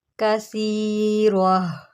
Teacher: اس کو گول تا بولتے ہیں۔ اگر یہ وقف کی صورت میں آ جائے تو اس کو ہم نے ہا ساکن سے بدل دینا ہوتا ہے، ٹھیک ہے۔ اب یہ ہو گیا ہا ساکن اور یہ ملے گا را کے ساتھ، را ہا زبر را، کثیرہ، ٹھیک ہے۔